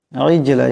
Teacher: জিম সাকিন, এটাও কলকলার হরফ, আওয়াজটাকে একটা ঝটকা দিয়ে উচ্চারণ করতে হবে